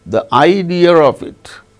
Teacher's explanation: if a word ends in a vowel sound and the next word begins also with a vowel sound r intrudes between the two words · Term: intrusive